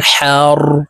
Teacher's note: হা হরফ হালুকের মধ্যখান থেকে উচ্চারণ হবে